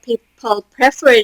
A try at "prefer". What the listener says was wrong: It's people prefer. So with a lot of verbs, including this one, the stress is on the second syllable, not the first.